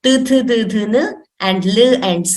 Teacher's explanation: the place of origin is dantaha or the teeth